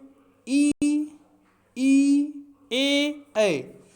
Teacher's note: जीभ का अग्रभाग ऊपर की ओर उठता है, इसलिए इन्हें अग्रस्वर कहते हैं।